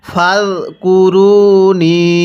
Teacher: এই নুনের মধ্যে আমরা 3 আলিফ টান দিব, কারণ আমরা পূর্বে পর্বের মধ্যে পড়েছিলাম মদের হরফের উপর এরকম চিকন চিহ্ন, এরপরে যদি এরকম লম্বা হামজা থাকে তাহলে সেখানে 3 আলিফ টেনে পড়তে হবে।